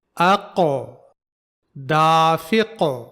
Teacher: آخر میں قاف کی تھوڑی سی آواز پھر سے دوبارہ نکل رہی ہے، یہی قلقلہ کی آواز ہے